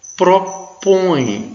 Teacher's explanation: veja que o E tem som de I